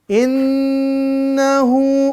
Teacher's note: Nun bertasydid, mim bertasydid, jangan lupa durasinya panjangnya 2-3 harokat. Hukumnya gunnah.